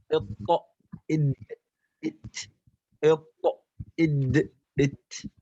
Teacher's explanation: يعني أنه يخرج من ظهر طرف اللسان مع أصول الثنايا العليا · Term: الطاء والدال والتاء